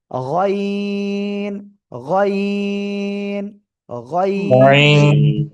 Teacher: এক কথায় জিহ্বার গোড়ার কাছাকাছি। এই জায়গা থেকে আপনার মোটা আওয়াজে তিন আলিফটা নিয়ে উচ্চারণ করতে হবে।